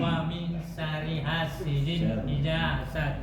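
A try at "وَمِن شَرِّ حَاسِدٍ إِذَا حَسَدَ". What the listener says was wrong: wa min syarri bukan syarnya yang dipanjangin syari enggak. Syar masukkan ke dalam ra. Syarri hasidin idza hasad.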